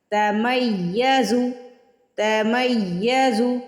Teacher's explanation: تکاد، کاف کے آگے الف آ رہا ہے، زبر کے بعد الف ہے، کاف کو سٹریچ کریں گے، کاف کو کھینچ کے ادا کریں گے، تا اور کاف دونوں باریک ادا کریں گے۔ تکاد تمیز، یا پہ تشدید آ رہی ہے تو آپ سارا زور یا کے اوپر ڈالیں گے۔ تمیز تمیز من الغیظ، غین اور غا کو موٹا ادا کریں گے۔